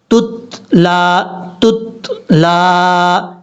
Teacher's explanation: دوسرا تا جس تا کے اوپر جزم ہے اس میں قلقلہ نہیں کرنا، تتلا نہیں پڑھنا، تتلا تتلا، اس طریقے سے۔